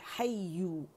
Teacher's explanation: या मुशद्दद है तो इसे जमाओ देंगे हय्यु, और गोलाई लाएंगे लिप्स की